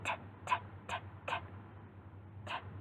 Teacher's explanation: my tongue doesn't come forward. It just goes right behind my teeth.